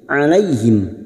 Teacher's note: mim sukun bertemu sa, mim sukun dibaca jelas tanpa mendengung idhar safawi